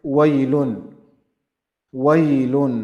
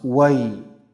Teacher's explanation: That's maddul lin, and it's 2 harakat long. Waylun. Then we have tanween on lam.